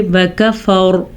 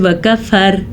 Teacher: إِلَّا مَن تَوَلَّى وَكَفَرَ، دیکھ رہے ہیں آپ نے را پر پڑھیے وَكَفَرَ، اگر جو باریک پڑھتے ہیں ویسے وَكَفَر، یہ غلط ہے، را کو پر پڑھنا ہے